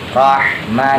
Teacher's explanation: H kecil H tipis ya keluar suara dari tenggorokan